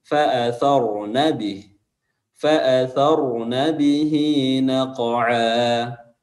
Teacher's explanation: Dia memanjangkan huruf nun di sini, padahal itu pendek.